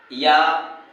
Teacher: याय का उच्चारण स्थान तालव्य है